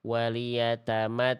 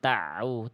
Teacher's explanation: bunyi ainnya jangan sampai masuk ke ta. Jadinya kayak tasydid ainnya. Waliyattau jangan tauu.